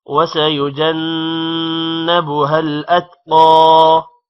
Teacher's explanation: وَسَيُجَنَّبُهَا نون پر غنہ ہے، اتقا قوف موٹا ہوگا